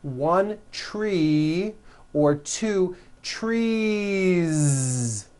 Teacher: you continue the voicing throughout the whole word and add on a voiced Z